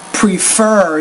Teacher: so put stress on that second syllable